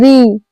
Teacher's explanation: ये स्वर मूर्धा से बोले जाते हैं इसीलिए इसे मूर्धन्य स्वर कहा जाता है।